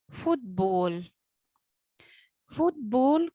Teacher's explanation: strong syllables are stressed or accented for example the word football football consists of two syllables foot and ball both of them are strong